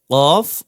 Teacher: জিহবার গোড়া তার বরাবর উপরের তালুর সঙ্গে লাগিয়ে কফ উচ্চারিত হয় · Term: চার নম্বর মাখরাজ